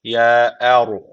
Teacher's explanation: bir Elif uzatıyoruz sadece Er derken ra harfi cezim almış öncesindeki harf üstten bağlandığı için ra harfi kalın okunuyor